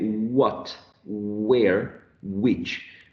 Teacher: there is vibration of the vocal folds so they are voiced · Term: semivowels